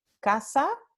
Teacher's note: con el ceseo, las 2 palabras se pronuncian con S, como en América Latina